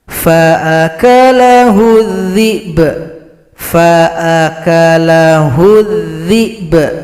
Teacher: Berikutnya pada ayat 17 di sini kalau berhenti huruf ba disukunkan, sempurnakan dulu huruf sukun berikutnya langsung dipantulkan pada huruf ba